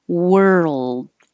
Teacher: moving from the r to the L and making sound the whole time and holding the tongue in the L position long enough that the L Sound can be heard